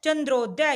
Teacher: अ और ऊ मिलकर क्या बनाते हैं, ओ। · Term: गुण संधि